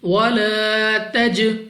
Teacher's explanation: اب سب سے پہلے ہمارے پاس یہاں پہ ہے الف سے پہلے زبر، یعنی الف مدہ ہے، 2 سیکنڈ تک لمبا کریں گے۔ جیم ہمارے پاس قلقلہ میں سے ہے، تو جب ہم ادا کریں گے ہمیں اپنی آواز واپس سنائی دے گی۔